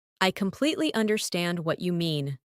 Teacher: Emphasize completely and understand. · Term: stressing key words